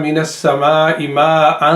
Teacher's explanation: اخفا ہوگا، ما ان کلیئر نہیں ہوگا